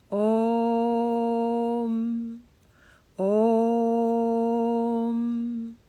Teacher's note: Om, O is always long. Om, O is 2 matra.